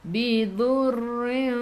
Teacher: ra tu kena ada getaran, sifat hurufnya takrir